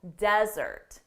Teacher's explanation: But for the noun, the syllable stress is on the first syllable